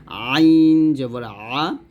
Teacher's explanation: হামজাহ জবর আ আমরা গলার শুরু থেকে নিয়ে আসবো, চাপ দেবো না, আর আইনটা গলার মাঝখান থেকে একটু চাপ দিয়ে বলবো